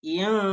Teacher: Apabila nun sukun bertemu dengan sin adalah huruf ikhfa, maka bacanya disamarkan